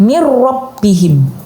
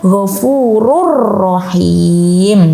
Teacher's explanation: jadi nunnya dibuang, langsung melebur ke huruf ro-nya. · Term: idgham bila gunnah